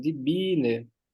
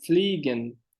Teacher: esse IE, esse aqui vai ter um I alongado só